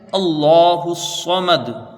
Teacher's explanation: ٹھیک ہے، دوسری آیت، حمزہ کو لام سے ملائیں گے، لفظ اللہ سے پہلے یہاں پر زبر ہے، لفظ اللہ سے پہلے زبر ہے تو لفظ اللہ کا لام پر ہوگا، لام کے اوپر کھڑا زبر ہے، کھینچ کے پڑھیں گے، ہا کے اوپر پیش ہے، اس کو جلدی پڑھا جائے گا، اور اس ہا کو یہاں صاد میں ملایا جائے گا۔